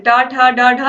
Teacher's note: इनका उच्चारण मूर्धा से हो रहा है